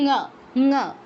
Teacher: কণ্ঠবর্ণ, ক বর্গের অক্ষরগুলো হচ্ছে কণ্ঠবর্ণ। আমরা যখন উচ্চারণ করি, আমাদের জিহ্বার পেছনের অংশ কণ্ঠে স্পর্শ করে।